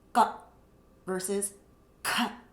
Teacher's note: And if I take my hand again in front of the mouth, ka versus ka. The second sound is mahaprana. There's a lot of air coming out.